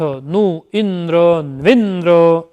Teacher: उकार के बाद जब संयोग होता है तब द्व्रन्नः यानी उस उकार का वकार हो गया। तो इसमें जो जिन उदाहरणों में इकार का यकार और उकार का वकार होकर स्वरित स्वर होता है, तब उसको क्षिप्र स्वर कहते हैं।